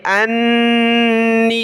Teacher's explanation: نون پر مد کریں گے اور غنہ کریں گے